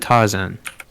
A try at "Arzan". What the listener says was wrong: Arzan. A-R-Z-A-N. Arzan. Without the T,